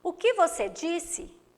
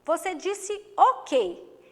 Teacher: pronunciado com menos intensidade já no e você disse o quê esse que foi pronunciado com mais intensidade logo temos um monossílabo tonico